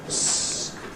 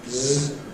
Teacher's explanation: So we have the s kind of sound as a voiceless sound, and therefore the other one z with a buzzing from down here in the glottis. This is the one which is voiced.